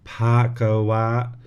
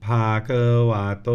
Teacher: So it's got a little bit of an H in there.